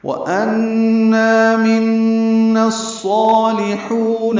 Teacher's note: صاد پورے 2 حرکات لمبا کریں گے، لام باریک ہے، حو حا وسط حلق سے ادا کریں گے، واو مدہ ہے